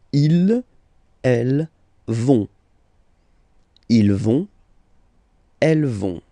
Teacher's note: final T not pronounced, so you get this ON nasal here